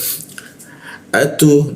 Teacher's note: Nah, posisi hamzah posisinya di tenggorokan bagian bawah dia.